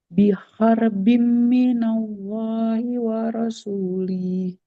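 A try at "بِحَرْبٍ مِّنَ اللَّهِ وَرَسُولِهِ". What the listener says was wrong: Lamnya nggak panjang. Wal rasulih di sini kasrah tidak ada ya-nya ya. Minallahi wal rasulih. Waro, huruf ro-nya jangan jadi ra ya. Wal rasulih.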